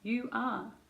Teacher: last rule is if you're linking a word ending in a vowel to another word starting in another vowel, there is sometimes what I call like a little sneaky y or a w sound. It's a sound, you don't write it, but you can hear it if you listen. · can you hear the w after you?